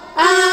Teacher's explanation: Mad lazim mukhaffaf kalimi. Mad badal bertemu sukun, panjangnya 3 alif atau 6 harokat.